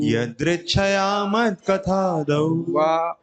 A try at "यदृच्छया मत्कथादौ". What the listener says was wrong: वाह भी होना चाहिए, मिस हो गया से, यदृच्छया मत कथा, तो कट रहा है ना बीच में